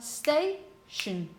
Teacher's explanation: 2 syllables, the stress falls on the penultimate syllable, but you only have 1 consonant before the vowel, closing vowel.